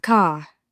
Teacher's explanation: In RP, it's a crisp car, no R.